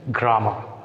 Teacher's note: Grammar, as it is a noun, takes stress on primary syllable